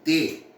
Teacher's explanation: a língua bate, a língua se encontra, vamos dizer assim, com os dentes superiores